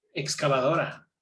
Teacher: Excavadora is stressed on the O.